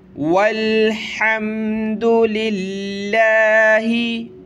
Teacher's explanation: लफ्ज़ अल्लाह से पहले ज़ेर होती है तो लफ्ज़ अल्लाह को पतला करते हैं, बारीक करते हैं